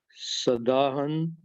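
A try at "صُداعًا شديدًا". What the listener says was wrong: सुदाअन, स्वाद पर पेश, सुदाअन शदीदन।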